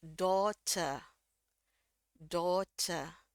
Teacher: r-nya di sini kita anggap mati ya